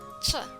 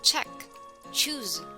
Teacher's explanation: The sound for CH is made by first stopping airflow by pressing the tongue against the roof of the mouth and then forcing air through a narrow gap between the two. The sound is ch.